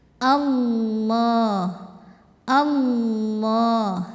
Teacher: lam pada lafaz Allah atau lam jalalah ini kita bunyikan dengan tebal sebab huruf sebelumnya kan fathah ya jadi cara menebalkannya pangkal lidah kita naikkan bukan dengan memoncongkan · kita ya jadi lebih atas dari tempat tumbuh gigi si atas bibir jangan ikut maju biar tidak ada bunyi w-nya